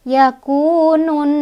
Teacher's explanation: Di nunnya juga ada hukum gunnah karena ada nun bertasydid. Cara bacanya didengungkan. Dengungannya ditahan 2, 3 atau 4.